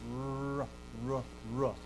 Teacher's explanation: your tongue hits that alveolar ridge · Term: the letter rho